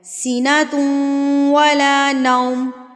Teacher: ایک حرکت کے برابر اس کو کھینچا جائے گا، سیناتوں، اچھا یہاں پر تا کے اوپر غنہ ہوگا تو ناک میں آواز جائے گی ، پھر واو پڑھنا ہے، سیناتوں ولا نوم، ٹھیک ہے۔ اب